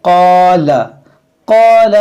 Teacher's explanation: क़ाफ अलिफ को खींचा, क़ाला लाम को नहीं खींचेंगे, लाम मुतहर्रिक है। बाद लोग गलती करते हैं क़ाला लाम को भी खींच देते हैं, तो लाम को नहीं खींचना है, क़ाफ खींचना है अलिफ के साथ।